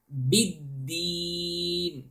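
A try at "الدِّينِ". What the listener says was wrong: بِدِّين. Again, the dal has also shadda, so you have to stress, you know, the sound when you pronounce the dal letter.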